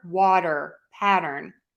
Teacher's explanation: think about this as a super fast D sound, this flap T.